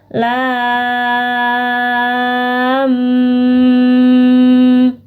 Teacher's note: sukun bertemu mim jadi harus dibaca dengung jadi cara membacanya adalah lam ada dengung di belakangnya ditahan